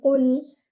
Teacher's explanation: the qaf without air, and your lam should be light, and it shouldn't be with qalqala. Avoid bouncing your lam.